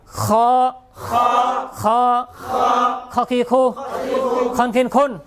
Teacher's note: কণ্ঠনালীর শেষ ভাগ হইতে, আওয়াজকে পেঁচাইয়া